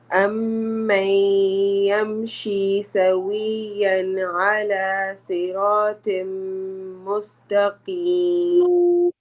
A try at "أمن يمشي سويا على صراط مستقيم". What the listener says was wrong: Yes, you need to just fix the letter صاد, it's heavy, and طا, صراط, صراط, and the word أهدى, أهدى, it's not ha. Do not say ahda. It is ahda.